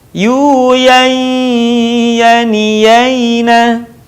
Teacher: Begitu juga dengan nun mati tanwin yang berwarna saat bertemu dengan huruf ya. Tahan suaranya dan keluarkan sebagiannya dari rongga hidung kita.